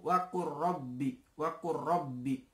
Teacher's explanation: Lamnya tidak perlu dibaca, tidak perlu wakul robbi, tapi wakur robbi masuk ke dalam huruf ro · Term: idgham mutaqaribain